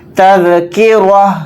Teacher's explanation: سانس توڑیں گے تو تا کو ہا ساکن بنا کر پڑھیں گے، اس طرح سے آواز نکلے گی تذکرہ.